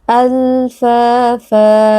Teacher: al-lam huruf bainiyah, pastikan ada sedikit aliran suara. Fa, mad tabi'i, karena ada alif yang sebelumnya berharokat fathah, dibaca panjang 2 harokat.